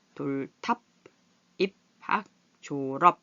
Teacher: 자, 비읍은 이렇게 입술을 붙였다 떼면서 이거는 여기에 해당하지만 끝에서는 읍 하고 막히는 소리가 난다